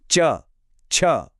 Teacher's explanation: च वर्ग के लिए आपकी जीभ ऊपर तालू से लगती है।